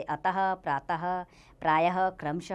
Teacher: विसर्ग का उच्चारण हल्के रूप से ह ध्वनि के समान होता है।